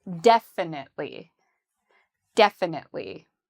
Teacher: this adverb has the stress on the first syllable. So we would say def, very strong and loud.